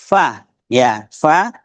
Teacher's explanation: Jadi fa fa latihnya F ada ketika disebutkan huruf fa ada napas keluar